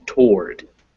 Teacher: So toward it's spelled with like it has two syllables, but it's actually just really one.